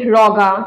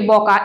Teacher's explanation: ঝাড়খণ্ডী উপভাষা মধ্যে ও যে ধ্বনিটি রয়েছে সেটাও কিন্তু অ ধ্বনিতে রূপান্তরিত হয়।